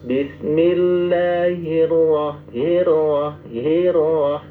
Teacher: Ra-nya bergetar dikit. Minimal 2 getaran.